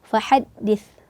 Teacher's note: Kita pastikan juga di akhir ayat ini fahaddits, jangan sampai ketukar antara huruf sa dan sin. Karena huruf sa ini ujung lidah menempel ke gigi seri bagian atas, keluar sedikit. Jadi membedakan antara makhraj sa dan makhraj sin.